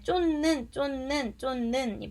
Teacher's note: 대표음화가 돼서 디귿으로 변하고요. 니은의 영향을 받아서 니은으로 변하죠. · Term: 비음화